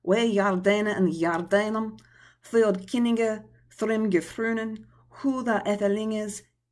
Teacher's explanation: The great vowel shift has not occurred in this. Therefore, all of the vowel sounds are that of continental languages.